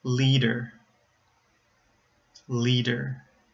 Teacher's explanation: I said the D at the beginning of the second syllable, not the end of the first syllable. It's not lead-er, it's leader.